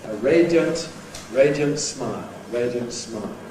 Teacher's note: Now that can compress, [ iə ] can become [ jə ] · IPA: ˈreɪdjənt